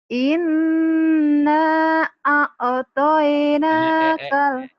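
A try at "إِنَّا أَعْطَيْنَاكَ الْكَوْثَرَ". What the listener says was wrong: Coba pelan-pelan, nggak usah pakai lagu. Kenapa jadi ada nggak ada kol-kolan di situ. Jangan ada kol-kolannya ya?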